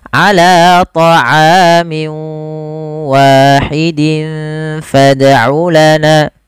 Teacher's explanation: masukkan tanwinnya ke huruf waw, kemudian dirubah suaranya menjadi huruf waw. Awalnya ala ta'amin wahid menjadi ala ta'amin wa. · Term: idgham bi gunnah